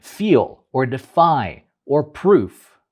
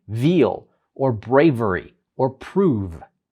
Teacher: the obstruction of the airstream made by the top teeth touching the lower lip. These are labiodental sounds.